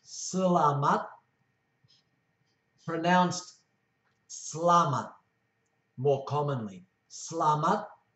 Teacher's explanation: There are two sorts of E's. The first E is soft, and it's virtually not pronounced.